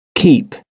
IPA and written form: kiːp (keep)